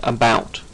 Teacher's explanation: line where it identifies English as a stressed timed language now a stress time language contains syllables that run for different lengths of time such as in the word about where the second syllable lasts longer than the first